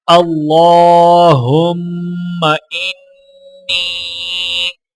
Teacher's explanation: اللہم انی، اللہ کے لام کے اوپر کھڑا زبر ہے، ایک الف کے برابر کھینچ کر پڑھا جائے گا اور لام کو موٹا پڑھیں گے۔ میم اور نون مشدد ہیں تو لہٰذا غنہ کیا جائے گا، اور نون کو یا کے ساتھ ملاتے ہوئے چھوٹا مد ہے تو لہٰذا 3 سے 4 سیکنڈ کھینچ کر پڑھا جائے گا۔